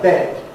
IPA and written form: bed (bed)